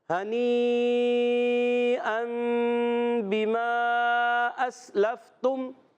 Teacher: ہنی پہ مد ہے، یہ بڑی مد ہے، مد متصل ہے، اس کو کھینچنا ہے، دو ڈھائی الف کھینچیں گے، پھر یا اقلاب کا قاعدہ ہے تو غنہ بھی کرنا ہے، پھر ایک مد آ رہی ہے مد منفصل، ان کو پورا کرنا ہے۔